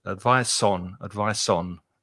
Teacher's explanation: because advice finishes with a consonant sound and on the preposition begins with a vowel sound it links together it connects